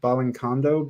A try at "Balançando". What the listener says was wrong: Balançando. Actually, it's not like a C. It's like a cedille. So cedille pronounced like 2 S's, SS.